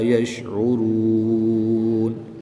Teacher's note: را پر پیش ہے، اس لیے را کو پر یعنی موٹا پڑھیں گے۔